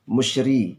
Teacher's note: ri ini adalah ro tarqiq, dibaca dengan tipis, musyri, jangan musyri tetapi musyri.